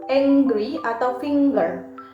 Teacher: biasanya diucapkan dengan bunyi Eng diikuti oleh bunyi G seperti dalam kata angry atau finger · Saat kombinasi huruf eng muncul di tengah kata, biasanya diucapkan dengan bunyi eng diikuti oleh bunyi geh